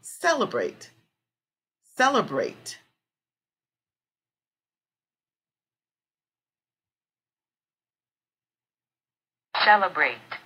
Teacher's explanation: cell the first part cell is our strong syllable